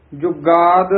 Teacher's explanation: ਸਚ ਜੁਗਾਦ ਪਦ ਵੀ ਥੋੜਾ ਜਿਹਾ ਕੱਸ ਕੇ ਉਚਾਰਨ ਕਰਨਾ ਔਰ ਜਜਾ ਸ਼ੁੱਧ ਬੋਲਨਾ ਯੁਗਾਦ ਨਹੀਂ ਕਹਿ ਦੇਣਾ ਕਈ ਯ ਹੀ ਲਾ ਦਿੰਦੇ ਹ। ਇਸ ਨੂੰ ਥੋੜਾ ਜਿਹਾ ਕਸ ਕੇ ਬੋਲਣਾ ਜੁਗਾਦ ਸੱਚ ਹੈ ਭੀ